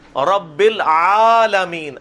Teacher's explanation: اب یہ آ جو ہے یہ لمبا ہے, یہ الحمدللہ رب العالمین نہیں ہے, رب العالمین. عین الف زبر آ, یہ جو ہے وہ زبر کھڑی زبر ہے, ایک الف کے برابر کھینچی جائے گی